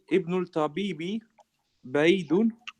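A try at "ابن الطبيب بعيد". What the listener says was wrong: But remember, the ta in at-tabibi, the ta is a sun letter, so we don't pronounce the lam. Yes, so we say ibn tabibi.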